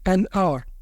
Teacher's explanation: The H is silent, so we just hear the vowel sound O. That's why we say an hour.